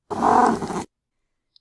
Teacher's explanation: Now the next subtype is the grunt, which is shorter, has a lower and often level of falling pitch, and it's a bit harsher, a bit raspier, a bit more creaky in the voice quality